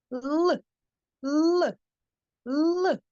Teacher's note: твердий приголосний який ми позначаємо умовно фішечкою з однією рисочкою розумнички коли ми вимовляємо звук л у нас ротик трішки відкрити а кінчик язика впирається у верхні зубки